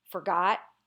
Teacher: the emphasis tends to be on got